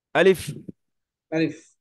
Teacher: আলিফ দু ঠোঁট মিলবে না, লম্বা টানও হবে না।